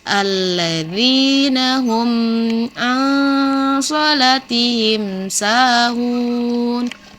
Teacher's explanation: nun mati bertemu dengan huruf so. Ini termasuk ikfa dan dibaca samar-samar.